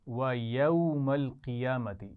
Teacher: قیامتی میں قاف کو موٹا پڑھنا ہے، اس پہ خیال رکھیے گا